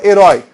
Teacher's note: É uma oxítona, é uma palavra oxítona terminada em ditongo aberto.